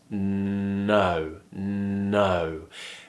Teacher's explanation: we have the n sound at the beginning where we just push the tongue against the top of the mouth and make the sound through our nose